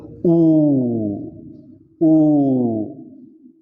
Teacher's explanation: The lips become rounded. It is called rounded vowels.